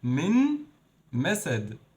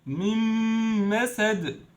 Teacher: Those 2 words as 1 word, and we added Ghunnah for 2 beats. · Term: Idgham with Ghunnah